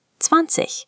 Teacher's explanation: The IG at the end of German words often makes a soft, airy ich sound.